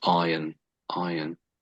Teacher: It should be iron, without R